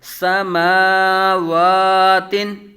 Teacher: میم کے اوپر بھی کھڑا زبر ہے، واو کے اوپر بھی کھڑا زبر ہے. دونوں کو دونوں حروف جو ہیں ایک الف یعنی دو حرکات کے برابر کھینچ کر پڑھے جائیں گے. الف مدہ کے قائم مقام ہیں.